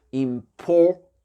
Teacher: Accent tonique, il est sur le PO ici, d'accord?